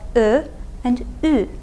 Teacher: They're also articulated in the front of your mouth. But these are rounded front vowels. That means you do round your lips when you say them. · Our two rounded front vowels in Turkish are ö and ü